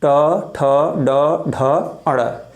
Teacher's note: जब हम ट, ठ, ड, ढ, ड़ बोलते हैं तो इनको बोलते समय हमारी जीभ जो होती है वो ऊपर मूर्धा की तरफ स्पर्श करती है। दांत के ऊपर जो मसूड़े होते हैं, मसूड़े के थोड़ा सा ऊपर वाला जो भाग होता है, वहाँ जाके जीभ ऐसे टकराती है। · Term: मूर्धन्य